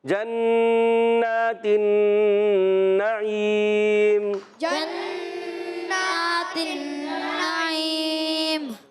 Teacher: جنات النعیم۔ غنّے کرنے، نون پر تشدید ہے، یہاں پر بھی نون پر تشدید، دونوں میں غنّہ کرنا ہے۔ جنات النعیم جنات النعیم۔